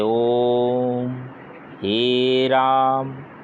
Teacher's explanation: जिन स्वरों के उच्चारण में हरस्व स्वर से तिगुना समय लगता है उन्हें प्लुत स्वर कहते हैं